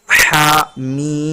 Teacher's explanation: हा मीम, यहाँ पर भी हा को सिर्फ एक अलिफ बराबर खींचेंगे, जबकि मीम को 3 अलिफ के बराबर खींचेंगे क्योंकि मद है